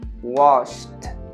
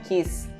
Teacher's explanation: Nenhum desses verbos aqui vai ter vibração no último som lá, no último fonema, na última consoante